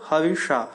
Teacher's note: मूर्धन्य श भी बोलते हैं। इसका उच्चारण मूर्धा से होना चाहिए जो ख से मिलताजुलता होता है। ख जैसा नहीं होता।